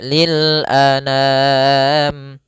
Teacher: A sempurnakan hamzah, jangan anam. Jangan dibaca dengan dengung atau dibaca dengan masuk hidung